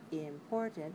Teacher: that in english we have words like important has three syllables we want to make the stress syllable the second one right it has to be longer